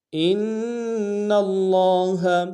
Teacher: ان میں حمزہ کو نون کے ساتھ ملانا ہے، نون کے اوپر تشدید زور دیں گے اور نون کو لفظ اللہ کے لام کے ساتھ ملائیں گے، تشدید زور دیں گے، لام کے اوپر کھڑا زبر ہے، ایک انتظار میں کھینچیں گے۔